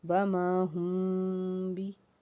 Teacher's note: و ما، ہاں میم پیش ہم، ہا حرف ہلکی کا حرف، میم ساکن کے بعد با آ جائے تو یہ اخفائے شفوی ہوگا، یعنی کہ یہاں غنہ ہوگا